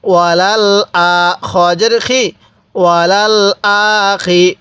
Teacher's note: এই হামজার মধ্যে এক আলিফ টান দিব খারা জবরের কারণে, কারণ যে হরফের উপর এরকম খারা জবর থাকবে আমরা ওই হরফের মধ্যে এক আলিফ টেনে পড়ব।